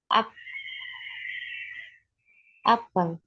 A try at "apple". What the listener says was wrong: Apple. Hurufnya diawali dengan huruf apa depannya? A. Huruf A itu huruf apa? Huruf A itu huruf vokal atau huruf konsonan? Ya, jadi nggak bisa pakai E.